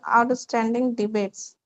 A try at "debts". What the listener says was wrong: Not debates, debts. Debts. B is silent, debts.